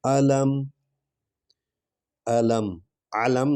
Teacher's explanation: عین نہیں پڑھنی، الف پڑھنا ہے، حمزہ پڑھنا ہے